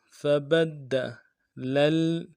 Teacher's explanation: فَبَدَّلَ الَّذِينَ ظَلَمُوا قَوْلًا لفظ فبدل میں فا کو نرمی سے ادا کرنا ہے، با کو دال کے ساتھ ملانا ہے، دال کے اوپر تشدید زور دیں گے